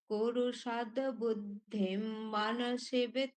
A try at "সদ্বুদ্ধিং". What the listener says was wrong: আপনি সকার গুলো ঠিক করার চেষ্টা করুন সকার গুলো স যে দন্তস রয়েছে স উচ্চারণটা ঠিকঠাক আসছে না